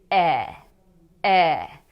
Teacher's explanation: The vowel e is slightly open. It's made with the tongue in the front of the mouth, but it's a little bit low. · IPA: /ɛ/